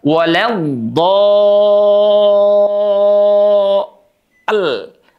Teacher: Tanda panjang ketemu dengan tanda tasydid, itu panjangnya 6 harokat. Jadi panjangkan dulu 6 harokat.